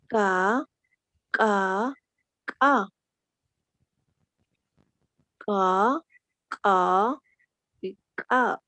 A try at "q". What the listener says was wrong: Repasa la pronunciación de la Q y la K, ¿ya? Lo estás confundiendo, ¿ya?